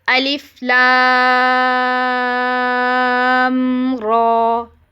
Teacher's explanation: لام کو 6 کاؤنٹس دے کے را کو 2 کاؤنٹس دے دیں، اور الف میں تو کوئی مد تھی ہی نہیں. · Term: مد اللازم حرفی مخفف